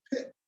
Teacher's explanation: That's called an unreleased T. And so normally in English, we kind of have an unreleased T at the end of words. · And it kind of stops right there. That would be an unreleased T